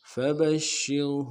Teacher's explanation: شین کو واضح کریں گے، تشدید ہے، زور دیں گے، را کو باریک پڑھیں گے